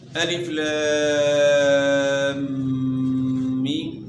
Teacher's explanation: مد لازم کی مقدار جو ہے 5 سے 6 الف ہے